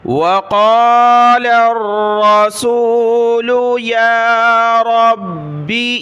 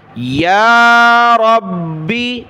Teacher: یا کے اوپر کھڑا زبر ہے، ایک الف کی مقدار کھینچا، را کو با کے ساتھ ملایا، با کو سخت کیا۔